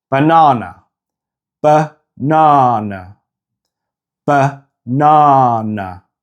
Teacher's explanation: In the English pronunciation of banana, the first and last A both reduce to the sound. It's only the stressed A that's in the middle that sounds like a normal A sound.